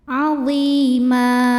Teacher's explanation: Azima mad'i waw, sebab ada baris tanwin fathah yang diwakafkan atau diberhentikan, maka cara bacanya dipanjangkan mimnya 2 harokat